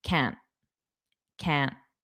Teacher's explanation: I'm not pushing out that T, so it'll be a uh a stop T, a flap T.